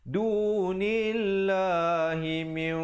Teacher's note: Asalnya mim baris bawah bertemu nun bunyi min, tapi bila datang dal min dua harakat. Dunillah dibacakan dua harakat dan dibacakan lafzul jalalah itu dengan nipis